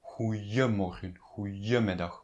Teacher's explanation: In Dutch, people usually say goeiemorgen, goeiemiddag with the j sound